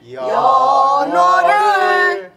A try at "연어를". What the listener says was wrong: 내리지 말고 를 그렇지